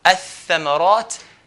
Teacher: alif will go straight to the tha and put a shadda on the tha, hold the tha